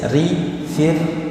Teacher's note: huruf ra adalah keluar dari ujung lidah bertemu dengan langit-langit depan dengan ada getaran situ ra ya, dengan getaran yang cukup halus